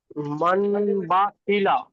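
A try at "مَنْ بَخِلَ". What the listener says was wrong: জি, মান হবে না, মাম হবে। নুন সাকিনকে মিম পড়তে হবে, জি, মাম বা খিলা।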